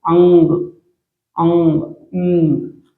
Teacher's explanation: मुंह से भी निकल रहा है हवा, नाक से भी निकल रहा है हवा, तो अनुनासिक, ठीक है, अनुनासिक स्वर कहा जाता है।